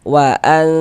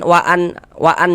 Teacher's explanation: Bunyi nun sukun atau bunyi tanwinnya itu dibaca samar dengan kita bersiap-siap masuk ke dalam huruf ikhfanya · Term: ikhfa hakiki